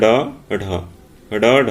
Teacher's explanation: जीभ की नोक उलटकर कठोर तालू से टकराकर आगे की ओर फेंकी जाने से उत्क्षिप्त ध्वनियां उच्चारित होती है।